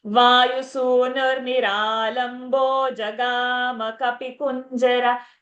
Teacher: jagama, on the gama, we have kept a little longer time. So always remember, dirgha sounds will get more time, then the tune will fit.